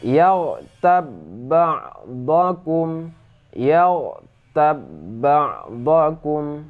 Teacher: huruf b yang mati ini tidak lagi menjadi huruf Qalqalah akan tetapi langsung dimasukkan ke dalam huruf b yang ada di depannya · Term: Idgham Mutamatsilain